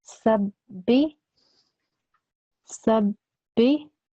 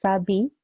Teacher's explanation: So that means that you have to stress the ba sound. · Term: tashdid